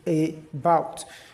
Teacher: the stress will be on the second syllable so it means that the first syllable will be unstressed and that's where our sound will be found.